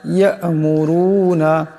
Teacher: এখানে রার উপর পেশ আছে, রার আওয়াজটাকে মোটা করিয়া পড়তে হবে